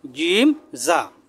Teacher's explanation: জিম হলো মোটা শক্ত করে যাই হলো পাতলা